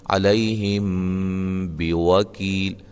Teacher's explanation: میم ساکن کے بعد با آ جائے تو وہاں اخفا مع الغنہ ہوگا